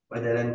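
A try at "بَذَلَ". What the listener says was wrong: Bazala, ini jangan bajalan, bazala.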